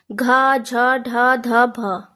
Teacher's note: सघोष महाप्राण है घ, झ, ढ, ध, भ, जिनको बोलने में थोड़ा सा ज्यादा समय लगता है।